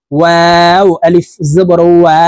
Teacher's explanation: ওয়াও হরফ ঠোঁট গোল করে দুই ঠোঁটের মাঝে ফাঁকা রেখে উচ্চারণ করতে হবে।